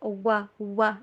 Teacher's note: واو کے اوپر آپ نے ہونٹوں کو گول کرنا ہے، کمپلیٹلی جوڑنا نہیں ہے، وی والی ساؤنڈ پہ نہیں بلکہ ڈبلیو والی ساؤنڈ کے اوپر